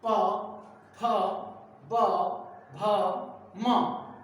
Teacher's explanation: ओष्ठ से बोले जाते हैं, ओष्ठ से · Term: ओष्ठेय वर्ण